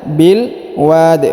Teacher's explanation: Huruf wa-nya dipanjangkan boleh 2, boleh 4, boleh 6 harokat ya. Karena di depan huruf wa terdapat alif sebelum huruf pemberhentian, dan huruf pemberhentiannya huruf di disukunkan atau dimatikan karena berada di ujung ayat sehingga kita pantulkan atau kita qalqalahkan.